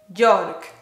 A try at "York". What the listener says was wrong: Yeah, don't pronounce the R, just York.